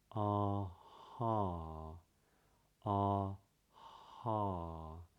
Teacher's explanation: The back of the tongue is really low and there's no stopping the sound, or the breath as it comes out.